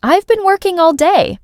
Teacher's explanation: The words been and all might be said quickly, almost disappearing. The main stress falls on working and day.